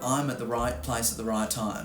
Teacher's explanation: Now my price vowel starts right at the back bottom corner of my mouth. The ah moves up to eh or I or a or whatever, right?